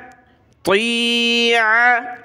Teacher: आइन को गले से निकाला